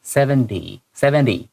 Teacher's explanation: Try to pronounce the T-Y as a D-Y